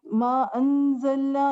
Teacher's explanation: यहाँ पर इख्फा करेंगे अंज़लना क्योंकि ये हुरूफ इख्फा है ज़ा